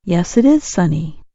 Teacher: When Americans answer a yes or no question with yes, we sometimes say the words with no break. The sounds blend together.